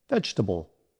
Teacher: The middle syllable TUH uses a relaxed uh sound called the schwa.